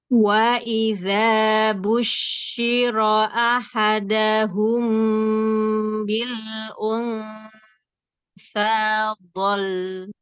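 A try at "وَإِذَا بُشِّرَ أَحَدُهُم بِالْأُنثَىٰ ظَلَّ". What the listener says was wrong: Ya, gitu. Bagus.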